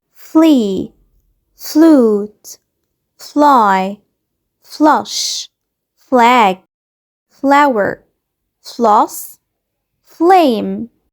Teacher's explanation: ما ينفعش أجيب ما بين صوت الف وال كده فاول وأقول فل. ما ينفعش أقول فل لأ فل.